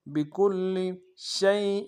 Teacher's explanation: کان بکل، با کو نون سے ادا کریں گے، کاف کو لام کے ساتھ ملانا، لام کے اوپر تشدید زور دیں گے، لام کو نون سے ادا کریں گے. · شین کو یا کے ساتھ ملانا ہے، یا لین بغیر کھینچے پڑیں گے، حمزہ کے نیچے تنوین غنہ کریں گے